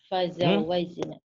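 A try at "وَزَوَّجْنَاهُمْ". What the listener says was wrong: Wa, bukan fa itu wa. Wazawajna. Wazawajnahum bihurin 'ain. Sentak Bu ini, Bu. Sentak. Tasjid.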